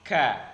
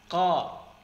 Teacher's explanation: Kemudian yang kedua, bunyi huruf kaf seperti huruf qaf, namun pangkal lidah diturunkan